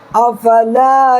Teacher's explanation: الف سے پہلے لام پر زبر ہے، الف مدہ، اس کو ماتر 1 سیکنڈ کھینچنا ہے